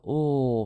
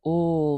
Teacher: we call it a lateral sound because our tongue touches behind our teeth at the midline of our mouth, and we allow the air to spill out around the sides of our tongue. We call it lateral because the air moves laterally.